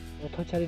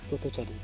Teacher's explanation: অ এর উচ্চারণ উ এর মতো উচ্চারিত করি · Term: মধ্য অ সংবৃত